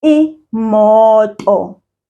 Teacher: Do you hear that the first O, we pulled it, we said mo, and then we said do.